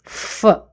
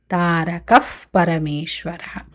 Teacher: సో పా ముందు వచ్చే విసర్గ ఉపధ్మానీయ శబ్దం అవుతుంది